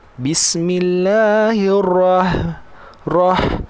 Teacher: Huruf ra ni kena tebalkan juga. Ra ada getaran dekat lidah.